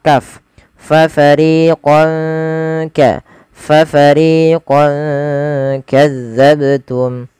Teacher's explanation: kaf maka fathahnya fatahnya dikasih warna hijau karena ia bacaan ikhfa cara membacanya samarkan tanwinnya kepada huruf kaf